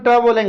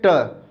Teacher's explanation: जैसे अपन ट बोला है तो जीभ हमारी ऊपर की ओर मुंह की छत के अगले हिस्से से टकरा रही है। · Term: मूर्धन्य व्यंजन